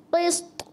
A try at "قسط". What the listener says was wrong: قسط. طا کی آواز واپس آ. قسط.